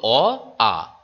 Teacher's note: কণ্ঠ থেকে সরাসরি নির্গত হলো, তাই তাকে বলা হচ্ছে কণ্ঠস্বরধ্বনি